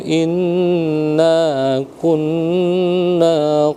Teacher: Nun bertasdid wajibal gunah jadi eh ditekan selama dua dua harakat